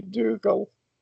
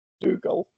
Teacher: Reading it in English, I'd say Dougal. With a thicker L sound. Dougal. So more like an A.